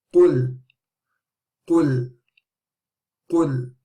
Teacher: Now again, qaf is a heavy letter and lam is a light letter, so the qaf will be pronounced heavy, but the heaviness does not continue to the lam.